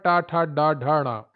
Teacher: टा वर्ग आता है मूर्धा में, तालु का अगला भाग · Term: मूर्धन्य